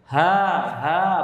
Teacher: Kalau ha tenggorokan bawah, antara udara sama suara bersamaan dia. Ha bersamaan.